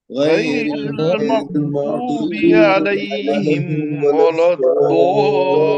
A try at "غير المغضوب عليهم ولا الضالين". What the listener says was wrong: जी अब यहाँ पे एक गलती हो गई कि मग़दूब, गैन पर कलकला हो गया, गैन पर कलकला नहीं होना चाहिए। मग़दूबी, गैरिल मग़दूबी, गैरिल मग़दूबी,